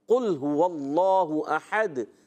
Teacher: قاف موٹا کرنا ہے، اگر اس کو باریک پڑھ دیا تو معنی میں خرابی آ جاتی ہے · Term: موٹا قاف